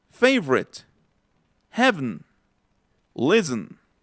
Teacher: En la de listen, en la de escuchar, hasta se pierde la T.